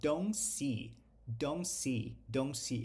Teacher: Qualquer verbo em inglês negativo, qualquer verbo auxiliar negativo, a gente não pronuncia o T quando o verbo seguinte começa com um som de consoante